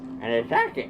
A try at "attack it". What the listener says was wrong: Sounds like you're saying tacky. Tacky. tacky.